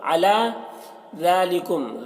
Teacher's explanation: दाल को बारीक पढ़ेंगे, मीम में इजहार शफवी होगा